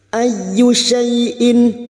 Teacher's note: masuk pada huruf ya yang bertasdid hanya masuk tanpa ditahan lama-lama